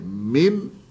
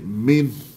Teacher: Min, lepas tu bunyikan ha sikit. Min, gitu. Hujung.